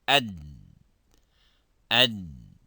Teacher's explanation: if you put your hands just close to your mouth by sounding ad, ad, there is no air coming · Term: dal